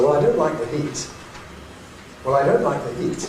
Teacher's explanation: So the nucleus goes on the heat, because that's the last bit of new information, the last content word.